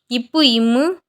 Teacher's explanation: இப்பு, இம்மு இந்த எழுத்துக்கள் மேல் இதழும் கீழ் இதழும் பொருந்துவதால் பிறக்கின்றன